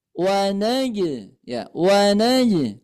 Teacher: ketika huruf ba, huruf jim, huruf dal memantulnya ke suara e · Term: qalqalah